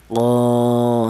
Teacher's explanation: tidak ada alifnya dibaca qo satu ketukan, la satu ketukan. Berhubung ada alifnya, maka huruf qof ini dipanjangkan yaitu dua ketukan. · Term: mad thaobi'i